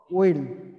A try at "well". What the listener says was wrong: Well. Ya, bukan will tapi well ya.